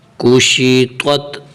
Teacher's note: آخر میں تا کی آواز اور درمیان میں طا کی آواز نکالنی ہے